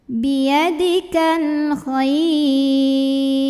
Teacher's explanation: Nah, kemudian ra kalau berhenti disukunkan. Dibacanya tarqiq.